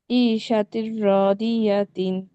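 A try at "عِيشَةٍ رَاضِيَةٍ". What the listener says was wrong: মাশাআল্লাহ, এখন সুন্দর হয়েছে।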